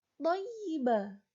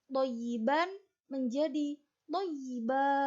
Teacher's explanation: Mad iwad adalah mad asli yang berlaku ketika waqaf. Di sini mengganti fathah tanwin dengan mad dua harokat karena waqaf